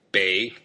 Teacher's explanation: Bei, the third tone, means north